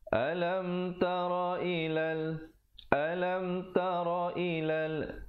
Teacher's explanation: Alam itu merupakan izhar syafawi, mim mati jangan dipanjangkan, terus masuk